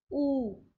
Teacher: जैसे ऊ आप बोलते हैं तो आपके होंठ गोल अवस्था में आ जाते हैं सिकुड़ कर, ऊ। इसमें आपकी जीभा का कोई भाग जो है उसमें रोल नहीं रहता है।